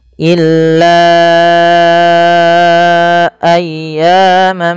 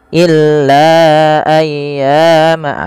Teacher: sini awalnya la dua harakat karena adanya Hamzah datang setelahnya maka ia berubah menjadi empat atau 5 harakat dan kita lihat hamzahnya berada di lain kata maka dinamakan dengan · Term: Mad Jaiz munfasil